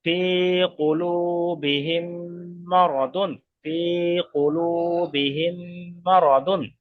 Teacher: মিম সাকিনের পরে মিম আসছে, তো মিমকে মিমের সাথে মিলিয়ে এক আলিফ পরিমাণ গুণা করে পড়তে হবে। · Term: ঈদগামে সাফাবি